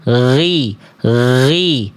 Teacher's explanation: Tapi gin itu kan mengalir suaranya ghi ghi bukan ngalir nafas ya. Ini ngalir suara.